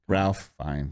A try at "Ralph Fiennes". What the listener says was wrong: Not Ralph. It's Ray. Ray. You say Ray. Ray.